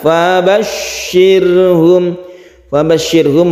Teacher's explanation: kita tasditkan syinnya kita tabrakkan ke syin kita tekan fabasyirhum fabasyirhum rnya ini tipis atau tarqik karena sebelumnya ada kasrah